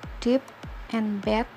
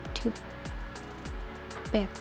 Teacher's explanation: Bagian oral diblokir dengan menekan ujung lidah ke alveolar.